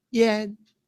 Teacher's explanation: So the sound is first tone, high tone.